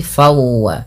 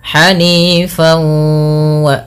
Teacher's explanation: Langkah pertama dengan mengidghamkannya dengan memasukkan tanwinnya kepada huruf waw. Kemudian langkah selanjutnya yaitu menahan dengan gunnahnya. Maka hanifan wa sambil masukkan rongga hidung. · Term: idgham bi gunnah